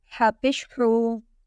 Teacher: Ha will come out from the middle of throat.